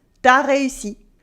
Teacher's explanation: we would cut the U in tu before the vowel and it would make T'as réussi, you did it.